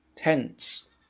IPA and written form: tents (tents)